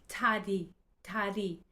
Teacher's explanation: The tongue, very soft tap behind the teeth.